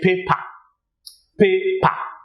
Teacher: a typical Nigerian, probably Igbo or Yoruba, will say paper, paper, without the R sounding.